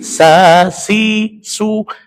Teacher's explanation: mus itu sinnya harus tipis. Cara tipiskannya apa? Bibirnya meringis.